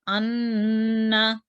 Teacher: नून पे 2 सेकंड आवाज़ thehraenge और नाक से आवाज़ जारी करेंगे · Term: नून musaddat